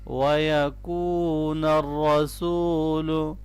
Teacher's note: واو مدہ ہے اور را کو موٹا پڑھیں گے را کے اوپر زبر ہے